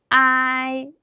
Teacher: 자, 아까 단음모는 그냥 하나의 음가로 소리를 냈는데 복음모는 소리가 중간에 변합니다. 자, 첫 번째 아로 시작해서 이로 끝나게 소리를 하시면 되는데 제가 해볼게요. 제가 방금 앞에다가 힘을 줬죠.